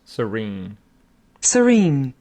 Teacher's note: With the stress on the second syllable